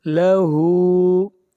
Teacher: للکافرین لیس لہو، لہو ہا کے اوپر الٹا پیش ہے، ہا کو کھینچ کر پڑھیں گے 1 الف کے برابر